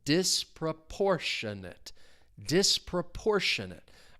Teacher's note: The stress is on that third syllable. · I'm really emphasizing that third syllable.